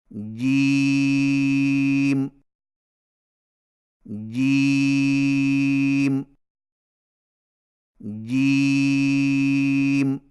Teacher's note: جیم کی ادائیگی میں زبان کے درمیان کو تالو کے ساتھ سختی سے لگا کر باریک آواز میں پڑھیں، یعنی جیم جیم جیم۔